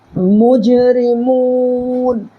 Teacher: حروف قلقلہ کے 5 حرفوں میں سے جیم ساکن کے ساتھ آ رہا ہے، یہاں پر اپنی آواز کو ٹکر کھا کر الگ کر دینا ہے